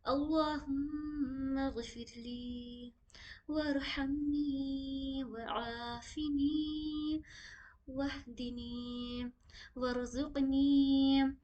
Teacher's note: را جتنی آ رہی ہے نا، اس کو بھی کوشش کریے گا تھوڑا منہ بھر کے پڑھیں